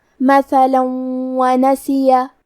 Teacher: واو حروف الادغام بغنہ میں سے ہے تو ہم تنوین کو واو میں ملا کے غنہ اور تشدید کے ساتھ یہ حکم کو ادا کریں گے۔ مثلا ونسیہ، کلمت نسیہ میں نون پہ زبر ہے، سین کے نیچے زیر ہے، پھر یا پہ زبر ہے تو ہمیں یہ تینوں حرکات کو ظاہر کرنا ہے۔